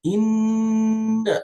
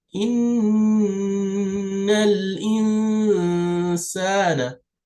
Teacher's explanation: this noon with the shadda is a form of the most complete gunna. So when you do gunna, you use your nose to make the gunna.